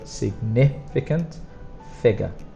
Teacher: significant strongest sound is on the second and then figure strongest sound is on the first